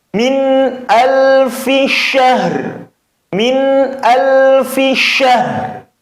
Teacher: Maka ha disukun tetap kondisinya syah. Kemudian dikasih ra yang samar, namun tetap kedengaran huruf ra.